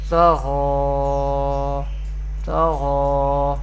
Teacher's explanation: to and gha are belongs to Mustalia family, and we pronounce both them with thicker voice or heavy voice